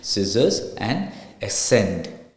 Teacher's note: The letter C is typically silent in the combination of SC.